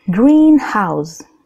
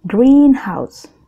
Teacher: Jadi, green atau kata pertama memiliki intonasi keras dan panjang, oke? Kalau house, kata kedua biasa aja.